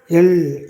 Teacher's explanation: எல், இது மேல்வாய் நாக்கின் ஓரங்கள் தடித்து தடவுவதால் பிறக்கின்றது.